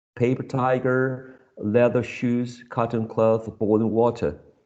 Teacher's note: we have a compound nouns as well here but they have a double stress or level stress